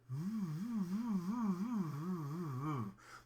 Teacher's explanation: you kind of do like a whistle shape with your lips what you can hear is the sound of the air going through my lips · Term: bilabial fricative